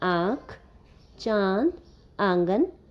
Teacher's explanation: उच्चारण करते समय हवा नाक और मुंह से निकलती है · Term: अनुनासिक